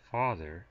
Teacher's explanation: the a as in father is considered a low vowel